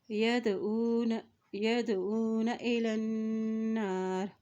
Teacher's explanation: اولئک یدعون الی النار، ید یا زبر دال ید، عین پیش و او نون زبر، یدعون ایلن، لام کے زبر کو نون کے ساتھ ملائیں گے کیونکہ نون کے اوپر شد ہے، اور جب بھی نون کے اوپر شد آ جاتی ہے تو وہاں پر غنہ بھی ادا کیا جاتا ہے.